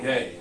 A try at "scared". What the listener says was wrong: cuz I don't know what you're saying. It sounds like you're saying gay.